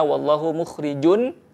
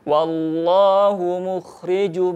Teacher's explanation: Yang pertama masuk ya, jum, kemudian yang kedua leburkan tanwinnya, kemudian yang ketiga adalah tahan selama 3 harokat ya, jadi tidak wallahu mukhrijun, namun leburkan mim tanwinnya, wallahu mukhrijum, tahan, kemudian libatkan al-khayshum, rongga hidung, sehingga sempurna kaidah dengungnya.